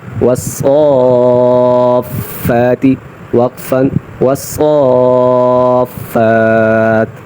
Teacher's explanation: صاد کی ادائیگی میں اس بات کا خیال رہے کہ اس کو موٹا کر کے پڑھیں، سین نہ ادا ہو